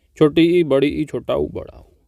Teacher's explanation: संवृत्त उन स्वरों को कहा जाता है जिन स्वरों के उच्चारण में मुख द्वार लगभग बंद रहता है।